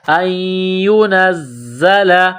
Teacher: نون کو زا کے ساتھ ملانا ہے، زا میں سختی کرنی ہے، سیٹی کی آواز پیدا کریں گے۔